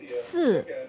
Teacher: the number 4 is a fourth tone, falling,